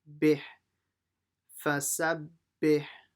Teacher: Now the second ba will join to the ha. Make sure you pronounce the ha from the middle of the throat.